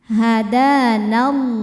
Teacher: Lam jalalah dibaca secara tafkhim karena sebelumnya berharakat fathah. Maka lamnya ini tebal.